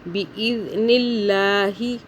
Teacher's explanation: اللہ باریک ہو رہا ہے کیونکہ اللہ سے پہلے زیر ہے۔ اللہ سے پہلے پیش ہو یا زبر ہو تو اللہ کو موٹا پڑھتے ہیں، زیر ہو تو باریک۔